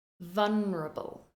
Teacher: I'm stressing the first syllable